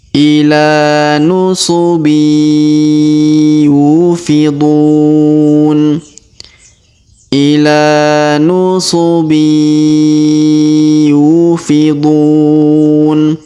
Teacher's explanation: tanwin innya kita lebur masuk ke huruf ya ataupun yu